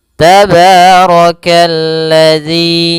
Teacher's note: ro-nya dibaca tebal karena dia ro berharakat fathah.